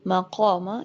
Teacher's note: یہ جو قاف ہے یہ بھی پر پڑا جائے گا اور یہ الف بھی پر ہو جائے گا